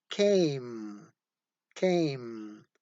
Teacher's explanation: the vowel sound a becomes nasalized because it occurs before the nasal sound · The A is nasalized, so you have to put the diacritic mark over the vowel A because it is before the nasal sound.